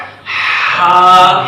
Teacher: درمیان حلق سے ادا ہوتا ہے ہا